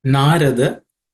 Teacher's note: Narada, they are all unaspirated consonants, so it should be simpler to say.